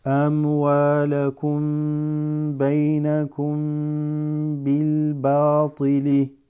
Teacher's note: meme that has a sukoon followed by a ba is usually you hold that. It's an ikhfa, it's an elongation.